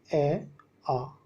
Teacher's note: इनका उच्चारण स्थान होता है कंठ, यानी गले से बोलते हैं इनको